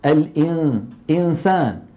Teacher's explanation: لا ينطقون سينا، بل ينطقون من النون غنتها، ويبقى صويت من الفم ضعيف لأن المخرج مفتوح ما في عائق أمامه